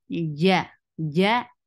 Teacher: Ja is short. And make sure there shouldn't be ch sound into it.